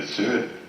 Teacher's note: in this video you can hear him saying 'sird' instead of 'third'